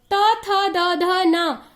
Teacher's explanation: जब हम लोग त वर्ग का उच्चारण करते हैं तो हमारा जीभ हमारे दांत के अंदर वाले हिस्से से टकराता है, इसलिए इसे दंत्य ध्वनि या दांत ध्वनि कहा जाता है